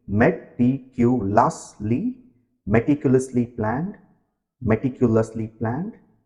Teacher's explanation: Focus on the pronunciation of the adverb meticulously. The stress is on lus, the sound before ly.